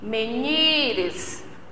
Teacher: A separação, menires, 3 sílabas. A sílaba tônica, a sílaba forte é o ni